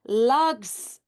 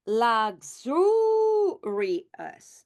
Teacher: the stress moves now from luxury to luxurious. So it moves to the second syllable, and now the vowel over here, it's an open syllable.